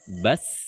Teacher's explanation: Sin ujung lidah dengan 2 gigi seri bawah. As ketika dia sukun maka dia akan kembali ke letak hurufnya atau makhrajnya.